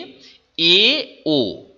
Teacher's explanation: এ ও এটা উচ্চারণ করে দেখো জীবটা একটু পিছনে চলে যায়